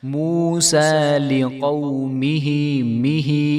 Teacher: ہا کے نیچے کھڑی زیر ہے تو اس کو ایک الف کے برابر ہم لمبا کریں گے